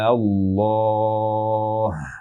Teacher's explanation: memanjangkan A-nya dengan panjang 6 harokat. Atau disebut dengan mad lazim, panjangnya 6 harokat.